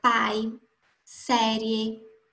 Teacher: Existem também aqueles ditongos que são orais, ou seja, o ar sai apenas pela boca. Na palavra pai, série, em nenhum momento eu senti a minha voz saindo pelo nariz.